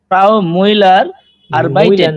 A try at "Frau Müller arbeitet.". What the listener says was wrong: না, এটা মিউলার, ফ্রাউ মিউলার, একটু হ্যাঁ উমলাউটটা, ইউ উমলাউটটাকে একদম গোল।